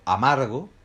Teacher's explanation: amargo tiene la sílaba tónica en mar